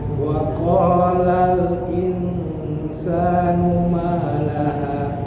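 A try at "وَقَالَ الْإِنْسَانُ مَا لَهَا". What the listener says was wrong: Nah, hanya sama panjangnya Pak. Jangan itu tadi terakhir belum 2 harokat tapi 1,5. Malaha.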